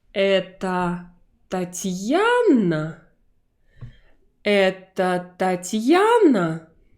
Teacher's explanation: we find the stressed syllable, and right there on that syllable, we raise our voice really high. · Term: intonation of the question